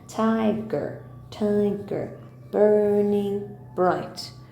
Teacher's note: we can see that this line is mostly trochaic